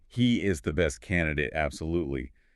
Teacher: That emphasis on is really solidifies the claim.